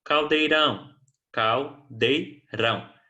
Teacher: Rão é a última sílaba tônica, é uma palavra oxítono